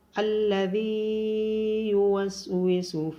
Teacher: من شر الوسواس الخناس الذي يوسوس في صدور الناس، ذال کو نرمی کے ساتھ ادا کیا جائے گا اور ذال کے بعد یا مدہ ہے تو ذال کو لمبا کیا جائے گا